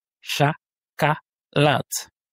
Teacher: l'accent est mis sur le A et les 2 O se prononcent comme un A, car ils ne sont pas accentués. On a 3 voyelles, donc 3 syllabes.